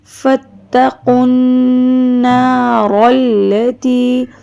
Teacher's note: نون مشدد، قاف کو نون سے ملائیں گے اور آواز کو تھوڑی دیر ٹھہرائیں گے، ناک میں لے کے جائیں گے آواز